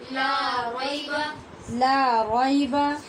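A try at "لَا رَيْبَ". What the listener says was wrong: غی نہیں پڑھے، غی یہ غلط آواز ہے، رئی بولیے، رئی، لا ریب،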